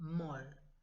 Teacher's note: Muy, en català, molt. M-O-L-T, acaba en consonant, acaba en T, però no es pronuncia.